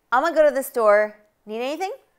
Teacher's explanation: you barely even hear the need anything right anything they kind of blend those two vowels